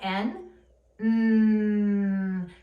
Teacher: tongue is held up steady on the ridge, and the air is resonating through our nasal cavity. That's why I have my finger beside the nose.